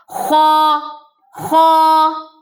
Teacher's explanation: خوا جو ہے وہ ہیوی لیٹر ہے، یعنی کہ آواز آپ کے منہ کے اندر ٹریپ رہے گی، بھرا رہے گا آپ کا منہ، اقصی لسان پیچھے سے اٹھے گی، یعنی کہ زبان کا جو بالکل لاسٹ پارٹ ہے وہ پیچھے سے اٹھے گا۔ خوا بھی 2 حرفی ہے، منہ کھلے گا اس کے لیے خو، خو۔